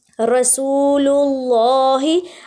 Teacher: اب رسول کی جو لام ہے وہ باریک ادا ہوگی